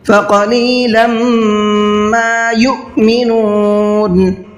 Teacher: فقلیلا قاف کو منہ بھر کے پڑھنا ہے. لم تنوین کے بعد میں میم آ رہا ہے، یہ ادغام کا قاعدہ کہلاتا ہے، یہاں پر غنہ کرنا ہوتا ہے تو غنہ کریں گے.